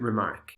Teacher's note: two stresses the First on re and the second on Mark English speakers usually stress the second syllable more than the first · English speakers usually stress the second syllable more than the first. To do it the other way around would be noticeable and a little odd, or it could even have an entirely different meaning, to remark a piece of work that you have already marked. · with the first syllable unstressed and the second stressed, an iamb